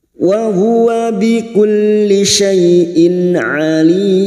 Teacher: bertemunya Mat dengan huruf hidup yang dibaca wakaf Ar sukun empat harakat kita panjangkan